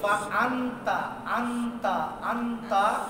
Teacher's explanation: এবার আর ফার মাখরাজ যেতে হবে না, তায়ের মাখরাজ যেতে হবে নুনকে নিয়ে। কোথায় ছিল ফা আনতা, আনতা আনতা, এখন নুন যে মাখরাজ থেকে উচ্চারণ হয় ওখানে রাখা যাবে না, তার মাখরাজ যাবে আত, এই ওখানে চলে যাবে জিহ্বা গিয়া মাখরাজে হালকা স্পর্শ করবে এবং নাক দিয়ে গুন্না।